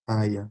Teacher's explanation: as semivogais ou as aproximantes para usar o termo aqui são muito mais fracas em relação ao A